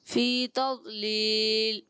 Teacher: ضاد میں کلکلہ نہیں کریں گے